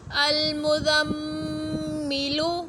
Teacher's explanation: میم مشدد ہے تو غنہ کریں گے